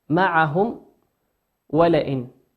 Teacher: معهم ميم ساكنة أتى بعدها حرف الواو، والواو من حروف الإظهار